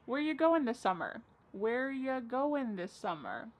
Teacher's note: Where ya, which is you, goin', dropping the G.